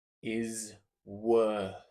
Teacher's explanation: Now, it's a th here, not an F on the end. So, it'll be the tongue coming out, not the bottom lip squeezing against the top teeth, but the top of the tongue squeezing against the top teeth.